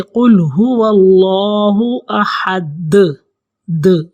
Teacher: قلقلہ کیا ہوتا ہے کہ جب ہم دال کے اوپر جزم ہوگی یا دال کے اوپر شد ہوگی یا دال پر ہم رکیں گے، وقف کریں گے، تو ہم اس کا آواز ایسے نکالیں گے کہ جیسے گیند کو دیوار پہ مارا جائے تو دھپ کی آواز آتی ہے، یعنی کہ ڈبل آواز آئے گی